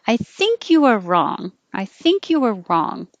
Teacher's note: If you want to sound softer and more polite and less direct, you put the emphasis on think, because it's not totally sure.